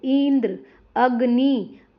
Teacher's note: इ और अ पर ज्यादा जोर दिया जाता है। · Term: बलाघात